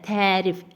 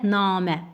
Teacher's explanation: həm tərif sözündə tərif ə saytı uzanır, həm də namə hissəsində namə a uzanır. Beləliklə də e variantında hər iki deməli sait uzanmış olur. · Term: uzanma